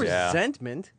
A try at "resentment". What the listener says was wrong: I don't like the fact that you enunciated the T in the middle there.